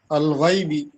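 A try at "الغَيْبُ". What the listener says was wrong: গয়বি না গয়বু, হ্যাঁ।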